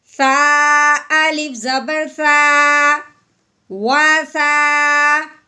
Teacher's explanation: الف سے پہلے، الف سے پہلے جب زبر آ جائے تو اسے ایک الف کے برابر لمبا کرتے ہیں. اب ہم نے سا کو لمبا کرنا ہے الف سے پہلے زبر آنے کی وجہ سے